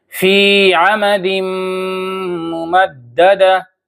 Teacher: تنوین کو ہم نے میم سے ملا دیا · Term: ادغام